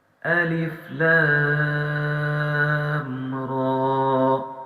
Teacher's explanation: صرف لام پر ہے، تو لہٰذا ہم صرف لام کو لمبا کریں گے، را کو 1 الف کی مقدار لمبا کرنا ہے اور اس الف کو بالکل بھی لمبا نہیں کرنا۔ یہ جتنے الف ہیں ہم نے الف کو لمبا نہیں کرنا۔